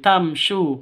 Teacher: Di sini ada sukun mim bertemu dengan shin, tamsyu. Sukun mim bertemu dengan shin, jelas, karena itu adalah bacaan izhar shafawi.